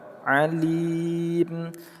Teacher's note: Li kita panjangkan dua sampai dengan enam harakat, terus setelahnya kita sukunkan huruf mim. Nama hukum tajwidnya adalah mad arid lis sukun.